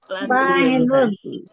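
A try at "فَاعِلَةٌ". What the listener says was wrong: Fa-nya panjang. Fa'ilatun.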